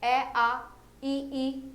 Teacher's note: अवृत्तमुखी इसमें क्या आ जाएगा, जो होठ गोल नहीं हो रहे हैं, जो गोल नहीं हो रहे हैं बाकी इसमें आ जाएंगे।